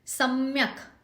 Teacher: स पे जोर आएगा, क जो है हलंत है, सम्यक करके उसको छोड़ना है हमें।